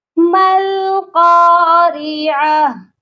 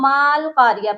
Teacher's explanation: میم کو ہم نے ڈائریکٹ لام کے ساتھ ملانا ہے، درمیان میں 2 الف ہیں ان کو ہم چھوڑ دیں گے، کیونکہ ساکن حرف پچھلے والے حرف کی حرکت کے ساتھ مل کر پڑھا جاتا ہے۔